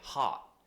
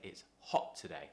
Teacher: you're not doing the kind of r open mouth sound you're doing more of the round shape oh and pushing your lips out